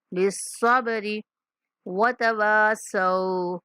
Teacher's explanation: واو کے بعد الف مدہ، صاد کے بعد واو لین